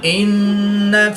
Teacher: नून मुशद्दिद में हमेशा गुन्ना होता है, तो यहाँ पर हम गुन्ना आनी करके पढ़ेंगे